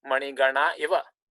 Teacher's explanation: Here the visarga is dropped. Mani gana eva.